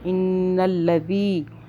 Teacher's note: اس ذال کو سافٹ پڑھنا ہے، زبان کو ہلکا سا باہر کریں، سیٹی کی آواز میں زی کر کے نہیں پڑھنا